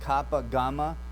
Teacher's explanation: Gutturals, we have kappa, gamma, and this is starting at the back of the throat. It's closed at the soft palate.